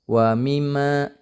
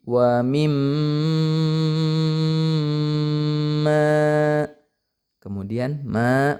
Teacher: mim bertasydid dan Nun bertasydid jadi cara bacanya ditahan dulu ya jangan langsung wimma tapi Wim kemudian Ma maanya panjang dua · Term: gunah